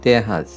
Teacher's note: É o R como se fosse a pronúncia francesa para R, né? É forte.